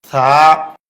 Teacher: তা। থা, জিহ্বার আগা উপরের দাঁতের আগায় লাগবে, জিহ্বা এবং দাঁতের ফাঁকে বাতাস বের হবে, এক আলিফ পরিমাণ লম্বা হবে, পাতলা আওয়াজ হবে।